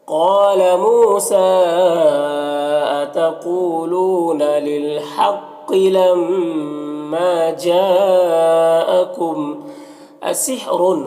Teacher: जीम में जो मद है मद्द मुत्तसिल है तो इसे 3 से 4 अलिफ के बराबर खींचेंगे।